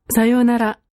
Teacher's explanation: In さ よ う な ら、 goodbye, there is a fall of pitch right after the syllable na